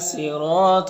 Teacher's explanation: صاد حروف مستعلیہ میں سے پر پڑھیں گے. را کو پر زبر را کو پر پڑھیں گے.